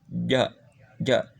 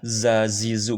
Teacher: Tempatnya adalah tengah-tengah lidah ditempelkan ke langit-langit atas.